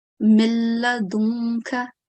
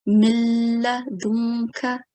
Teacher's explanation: it's almost as if we are joining the meme to the lam mushaddad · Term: idgham kamil